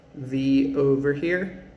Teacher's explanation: your mouth is the same but v is voiced